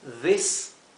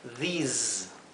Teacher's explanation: que están eh donde la s viene seguida por una vocal la s se pronuncia como un zumbido mientras que esta se pronuncia s más como un silvido como la s española